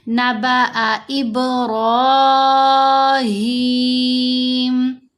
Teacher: اب ہم نے 3 سے 4 حرکات کی مقدار یہاں لمبا کرنا ہے۔ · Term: مد عارض